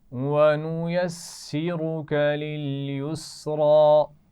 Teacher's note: وَنُيَسِّرُكَ, ایک تو سین کے مخرج کا خیال رکھیے, آسان سی آواز ہے, اس میں سیٹی ہونی چاہیے. را اس میں موٹا پڑا جائے گا